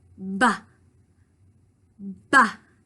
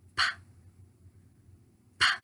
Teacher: on ba, we turn on our voice. With pa, we don't use our voice.